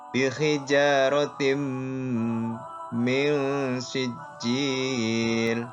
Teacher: bihijaratim, tanwin bertemu mim. Ini bacaan idgham bihunah. Dengung ya. Bacaan idgham serta dengung ya.